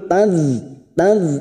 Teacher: sukun kita tahan jangan sampai memantul